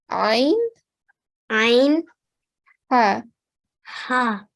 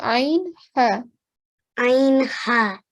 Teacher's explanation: The sound of ayn and ha comes from the middle of the throat. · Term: letters of throat